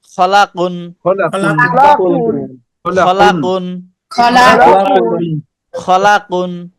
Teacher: খলা টান দিল কে, টান হবে না।